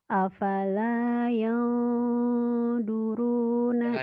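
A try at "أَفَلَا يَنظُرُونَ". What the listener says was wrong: jangan yang duru itu orang Sunda yang zuru afala yang zuru jangan yang duru orang Sunda Afala yang zuru itu mah teh atin dulu.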